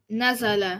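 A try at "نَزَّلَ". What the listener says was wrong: Shadda always. This family wants a shadda. This guy wants a shadda.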